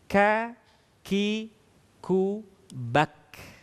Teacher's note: saat mengucapkan huruf K terdengar ada nafas yang mengalir.